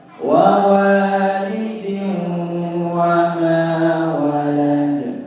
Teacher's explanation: Kalimat wawalidin wa ma walad, di situ ada idgham bi gunnah ya. Sehingga ada suara yang keluar dari hidung.